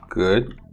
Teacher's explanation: now for g it's a voiced velar plosive the lips are spread